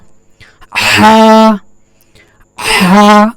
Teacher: হার মাখরাজ হল হলকের শুরু হইতে সরি হলকের মধ্যখান হতে দুইটি হরফ উচ্চারিত হয় একটি হল আইন আরেকটি হল হা এটাকে ভিতর থেকে উচ্চারণ হবে এটা বলছে যে হলকের মধ্যখান থেকে মানে গলার মাঝখান থেকে যে হরফটা উচ্চারণ হবে সেটা হল হা